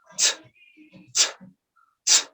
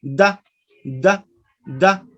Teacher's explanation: The aspiration. The first sound, ta, is produced with aspiration, and the second sound, da, no aspiration.